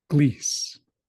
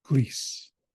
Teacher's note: they're replacing the R with an L